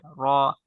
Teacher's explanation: জিবার আগার পিঠ, তারপর ওর উপরের তালুর সঙ্গে লাগিয়ে র, মোটা করে র।